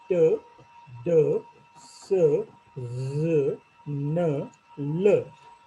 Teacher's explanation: If you produce the sounds like t, d, s, z, n, l, you will feel that your tip of the tongue touches the alveolar ridge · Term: alveolar sounds